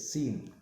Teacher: پھر تھا کی آواز نرم، باریک اور سیٹی کے بغیر ہوتی ہے، جبکہ سین ہے آواز باریک اور تیز سیٹی کی جیسی ہوتی ہے